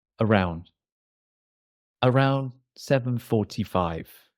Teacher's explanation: in the American accent around the d Almost disappears